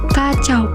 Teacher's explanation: Diftong naik menutup mundur adalah au, contohnya kacau